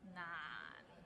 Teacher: so we start with n and ends with another n and it's in a low tone